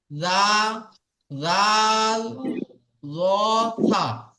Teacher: জীবের আগা সামনের উপরের দুই দাঁতের আগার সাথে লাগিয়ে উচ্চারিত হবে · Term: জাল